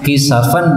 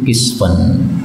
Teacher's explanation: Kisafan sinnya boleh disukun menjadi kisfan